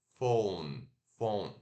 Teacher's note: Som do F, O normal do português, U ferradura, U e N.